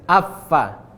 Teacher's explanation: Fa bibir bawah bertemu dengan gigi seri, ujung gigi seri atas.